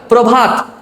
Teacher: তাহলে দেখো আমাদের উচ্চারণ কি প্রভাত নাকি প্রভাত? দেখো আমরা কিন্তু অ বলি না, প্রভাত অটা বাদ দিয়ে উচ্চারণ করি